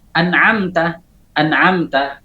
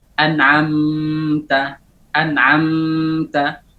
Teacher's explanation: Nah, jadi pada saat mim sakin dalam keadaan izhar, jangan memanjangkan gunnah pada mim sakin.